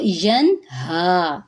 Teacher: ارأیت الذی پہ یا مدہ ہے, ایک الف کے برابر لمبا کریں گے. ینہا, نون ساکن کے بعد ہا ہے تو نون کی آواز کو ظاہر کریں گے